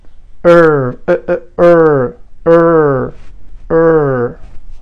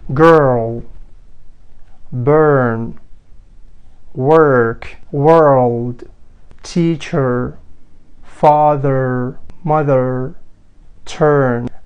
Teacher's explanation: هذا الصوت بشكل سريع له ثلاث عوامل حتى ينطلق، ينطق بشكل صح. ينطلق من حبال الصوتية ووضعية اللسان تصير عدلة والحواف مالته تصير بين الفكين ومتوتر، وضعية الشفتان هاي ار ار ار ار. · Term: صوت R العلة